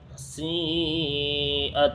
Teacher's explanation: سیئت، سین یا مد زیر سی، حمزہ تا زبر ات، سیئت۔ اس میں دیکھیے مد متصل ہوگا کیونکہ حروف مدہ کے بعد حمزہ اسی کلمے میں ہے۔